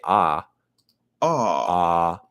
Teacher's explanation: when you say ah the back of your tongue goes down